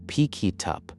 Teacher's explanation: Liaison is the tendency to link words together, making a phrase like pick it up sound more like a single word.